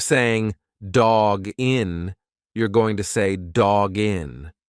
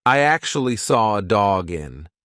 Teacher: When you've got that hard consonant followed by a vowel, just push the two together like it's one word.